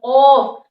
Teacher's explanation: عربی میں ان کا نام ہے حروف لہویہ، اور قاف زبان کی جڑ تالو کا نرم حصہ، کاف زبان کی جڑ تالو کا سخت حصہ۔ جب آپ کو ایسا محسوس ہونے لگے کہ آپ کی زبان اوپر اٹھ کے نرم حصے میں ٹچ ہوئی، تب آپ کا قاف 100% ادا ہو گیا